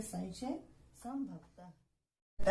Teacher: अनुस्वार का उच्चारण न या म होता है